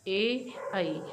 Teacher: वायु कंठ से तो निकल रही है, लेकिन ये हल्के से तालु को भी स्पर्श करते हैं। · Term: कंठ तालव्य ध्वनियाँ